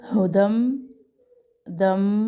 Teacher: 2 تنوین اور تشدید کو ہم ملا رہے ہیں تو اس ملانے کو کہتے ہیں ادغام۔ ادغام کا نام ہے ادغام مع الغنہ۔